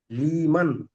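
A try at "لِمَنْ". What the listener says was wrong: লি টান দিচ্ছেন কেন?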